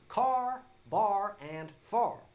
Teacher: I'm speaking with a Southern twang accent, which isn't slow at all. It's also a little bit nasal and has what we call a rhotic R.